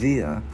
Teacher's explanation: Chữ đờ mình đưa lưỡi qua giữa hai răng ép rung